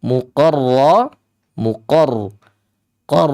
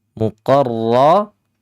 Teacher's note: ra ini sifatnya takrir ya dia terulang tapi tidak lebih dari dua kali